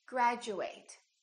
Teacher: by a u this change also happens however it's slightly different instead of saying Chu it sounds like we're saying ju